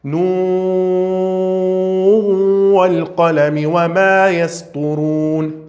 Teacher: Fazer idgham bighunna. Vai sumir a letra Nun.